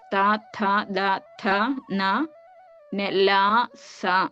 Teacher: ദ ഥ നെ ല സ നമ്മൾ ഉച്ചരിക്കുമ്പോൾ തന്നെ അത് ശ്രദ്ധിച്ചാൽ അറിയാം ഇതിനെ ദന്ത്യങ്ങൾ എന്ന് പറയും പല്ലിന്റെ സഹായത്തോടുകൂടി ഉച്ചരിക്കാൻ കഴിയുന്നത്